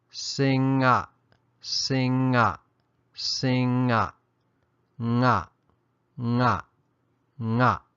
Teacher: we're going to add a short A sound, a brief A sound at the end of the consonant, as there will always be some kind of vowel sound following it.